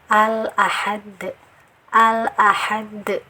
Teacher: Jadi lamnya ini dibaca dengan jelas, dengan idhar ya. Nah, jika diurai seperti ini, lamnya jelas terlihat dibaca. · al jangan dibaca dipantulkan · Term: alif lam komariah